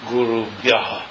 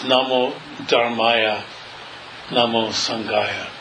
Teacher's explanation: with no extra ha sound at the end